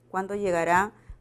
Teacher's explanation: presenta el tono final descendente